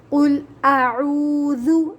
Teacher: ذال کو نرمی کے ساتھ ادا کریں گے، نرمی والا حرف ہے۔ قل اعوذ، ذال ادا کرتے ہوئے نا زبان دانتوں کے درمیان میں آ جائے گی